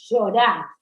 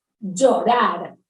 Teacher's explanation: Y llorar es un sonido sordo, distinto del que haría Graciela Borges, por ejemplo, que es llorar, ¿no? Con la vibración de las cuerdas vocales.